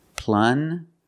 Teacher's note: Use the regular N and the j, j sound, like juice.